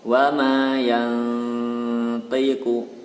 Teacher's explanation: Dibaca dengung 2 harokat dan samar-samar. Kemudian lidahnya bersiap mengucapkan huruf to. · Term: ikhfa